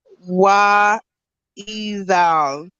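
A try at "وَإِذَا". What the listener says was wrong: This one actually we don't pronounce the lam. You see that it's gray. So we don't pronounce it. So we're gonna go from this letter directly to the noon.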